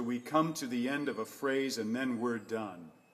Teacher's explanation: the American intonation will tend to just drop right at the end.